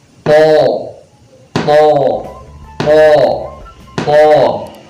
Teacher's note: keluar dari ujung lidah yang bertemu dengan gigi bagian atas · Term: huruf tho